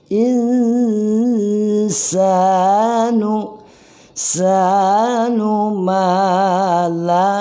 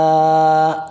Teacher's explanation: Jadi wa qalal insa itu ada dengung di hidung. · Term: ikhfa